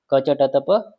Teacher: तो कंठ देखो कैसे चलते हैं हम, पहले कंठ, पहले कंठ से चले, फिर ऊपर तालु में पहुंचे, फिर आगे मूर्धा, फिर आगे हमारे दंत और फिर होंठ